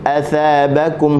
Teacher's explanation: huruf tha hujung lidah di hujung gigi atas. Athabakum, huruf ba syafatain, asalnya tutup, kita buka ba, huruf yang nipis, buka mulut sambil nak senyum.